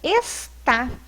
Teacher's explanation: nós vamos entender que a última sílaba é a sílaba tônica. E nesse caso, então, nós vamos ter uma palavra oxítona.